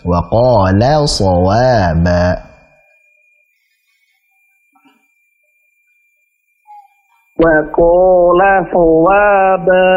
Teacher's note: Wa qala, lanya tipis ya.